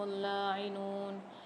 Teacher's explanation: لاعنون میں لام کے اوپر مشدد ہے اور کھڑا زبر ہے، سختی اور جماع کے ساتھ بھی پڑھیں گے اور کھینچ کے بھی پڑھیں گے